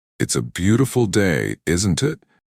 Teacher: "It's a beautiful day, isn't it?" But if you say it naturally, it will sound like, "It's a beautiful day, isn't it?" with your intonation rising on beautiful and gently falling on isn't it